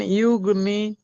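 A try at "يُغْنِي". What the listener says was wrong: টান দেবেন তো, এক্ষুনি আপনি পড়লেন।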